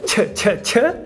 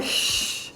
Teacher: A africada ch, ch, ch e a palatal sh.